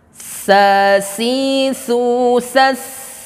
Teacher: Sa, sa, dan ada sifat hamsnya, ya, desisan aliran nafasnya.